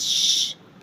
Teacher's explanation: In French, you don't say ch, you say shh, like this, shh, SH.